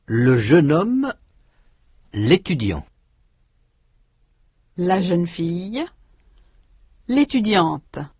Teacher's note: Before a word starting with a vowel sound, étudiant, ami, histoire, the definite articles le and la are shortened to the consonant sound l, spelt L apostrophe. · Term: elision